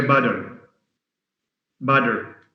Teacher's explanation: Regarding the T in butter, British, in American English they say butter. Butter. They change it to a D.